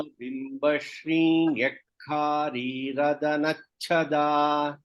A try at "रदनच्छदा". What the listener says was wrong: here there is no dirgha nyakkari you said you have to make it hrasva nyakkari radanachada.